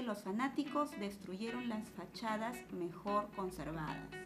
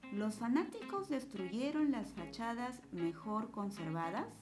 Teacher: el tono de esta oración es un tono descendente